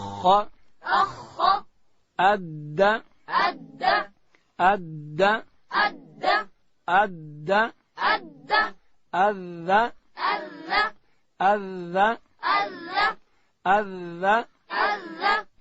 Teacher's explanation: دال ادا کیږي چې کله د لوړې زامې د مخ دو غاښو بیخو ته د ژبې سر وروړو، دلته حرف دال ادا کیږي.